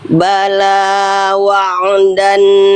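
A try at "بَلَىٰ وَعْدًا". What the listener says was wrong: Jangan mantul lain sukun. Wa'dan. Jangan mantul lain. Bala wa'dan. Jangan mantul lain. Wa'dan, jangan ada wa'dan. Bala wa'dan.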